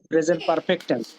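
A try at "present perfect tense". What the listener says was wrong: পারফেক্ট। পারফেক্ট পারফেক্ট। আমি একটু ফটা না স্ট্রং করে বলতে হয় না, ওকে, ফটা খুব মাইল্ড।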